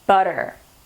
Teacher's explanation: It's between two vowels. So those vowels soften that T sound and it becomes D.